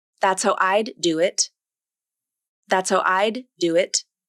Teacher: they might devoice the D consonant, which turns it into a T consonant. This can be confusing for the listener because they might hear a completely different word than what was intended by the speaker.